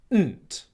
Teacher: And then what you're doing is you're combining the N sound, which comes from your nose, with the T sound that comes from your tongue at the front of your mouth